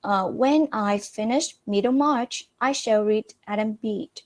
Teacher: in the first sentence, the word Middlemarch is using falling and rising tone